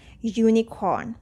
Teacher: i'm not pronouncing r here because in british english we do not say the earth sound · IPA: ju:nɪkɔ:n